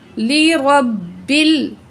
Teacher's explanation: रब रा को मोटा पढ़ेंगे, बा तशदीद से मिलाएंगे, बाकी ज़ेर को लाम से मिलाएंगे, अलिफ नहीं पढ़ा जाएगा।